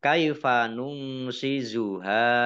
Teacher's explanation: nun sukun bertemu dengan huruf shin bacaan ikhfa dibaca samar-samar